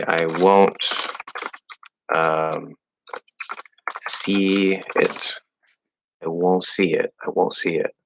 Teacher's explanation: instead of going into the N and doing either a full T or a stop T, if you're flowing into the next word, you can just make that O a little bit nasally. So instead of whoa or do, it'd be like whoa, don't, a little bit here.